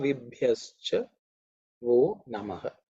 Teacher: the Bha is the fourth letter in the Pavarga, aspirated.